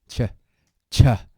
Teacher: So ch, you can hear that shouldn't be aspirated.